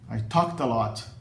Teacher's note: O ED final soa como T, porque a consoante final do verbo é uma consoante surda, que é o K.